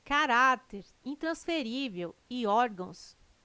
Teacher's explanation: Caráter, intransferível e órgãos têm sua sílaba tônica na penúltima sílaba. São paroxítonas.